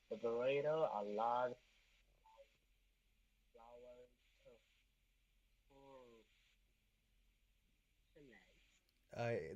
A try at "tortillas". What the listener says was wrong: The so it's a Spanish word, so you don't pronounce the L's. It's gonna be tortilla with like a Y. Um, it's tortilla.